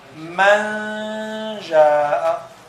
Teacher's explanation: We hide the nun. That's why we say manja with ghunna. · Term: ikhfa